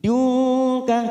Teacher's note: Min ladunka nun sukun bertemu kaf ikfa abad · Dunka kita samarkan 3 ketuk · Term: ikfa hakiki